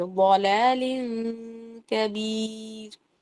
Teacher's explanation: لام دو زیر لن اور کاف کے درمیان میں بھی اخفا ہو رہا ہے یا غنہ ہو رہا ہے بغیر وائبریشن والا. کاف کی طرف اسمائلی فیس، ہونٹ اور اپنے حلق کا حصہ جو ہے وہ بالکل ریڈی رکھیں گے آپ کاف کے لیے، لیکن غنہ کریں گے. · را کیا ہے؟ باریک ہے زیر کی وجہ سے